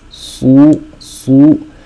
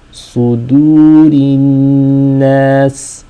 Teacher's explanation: صاد is a heavy letter. صو, and دال is light.